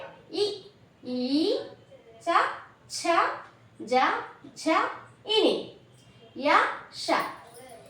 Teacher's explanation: దౌడల సహాయంతో పలకబడేటువంటి అక్షరాలను తాలవ్యాలు అని పిలుస్తారు